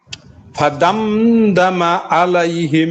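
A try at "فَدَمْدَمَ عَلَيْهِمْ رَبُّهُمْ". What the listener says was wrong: এখানে ফাদামে গুণ হবে না, তো প্রথমে ঠিক ছিল। ফাদামদামা গুণ।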